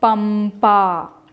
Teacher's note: Ma is the nasal sound of pa.